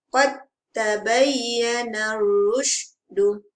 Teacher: Qad dal tu tidak dibunyikan.